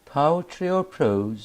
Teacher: The speaker's voice rises on the first choice or choices and falls on the last one. For example, do you prefer reading poetry or prose?